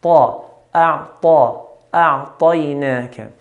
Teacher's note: إنا أعطيناك. طا here is from the heavy letters. So we pronounce طا in a heavy manner.